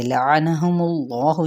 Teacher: اس میں جلالہ کا لام پر پڑا جائے گا کیونکہ پیچھے پیش ہے، اور یہاں پہ ہم نے وقف کر دیا، کیسے ہا کو ساکن کرتے ہوئے لعنہم اللہ، ٹھیک ہے، وقف بالاسکان ہو گیا۔